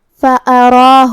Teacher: یہاں را کا حرکت ہے زبر، تو ہمیں را کو بھاری آواز میں پڑھنا ہے، جو کہ اس کے بعد کھڑا زبر ہے.